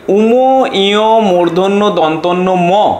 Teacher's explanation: শ্বাসবায়ু মুখ বিবরের পাশাপাশি নাক দিয়েও নির্গত হয় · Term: নাসিক্য বর্ণ